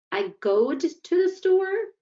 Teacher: the teacher repeats the student's utterance with rising intonation to indicate that there was an error